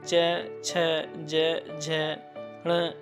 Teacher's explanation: जिन्हें बोलते हैं च, छ, ज, झ, ण। ये तालु स्पर्श करते हैं।